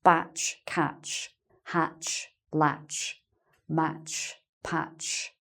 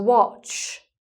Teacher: so it's short o sound, aw, as in orange